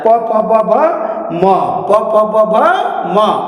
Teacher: म बोलते वक्त दोनों ओठ चिपकता है, नाक का सहायता लेकर बोला जाता है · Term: ओष्ठ अनुनासिक